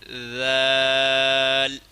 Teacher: ذال اور ثا کا مخرج ایک ہی ہے، دونوں دانتوں کے سروں کے ساتھ زبان کے نوک ٹچ کرنا ہے اور نرم کر کے پڑھنا ہے۔